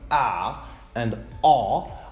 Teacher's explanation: vowels but if we take the two examples ah and ah are both low vowels because the tongue is low in the mouth in the production of these two vowels